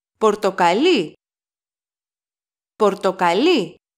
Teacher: last syllable of the word so Porto Cali is the color the stress is on the last syllable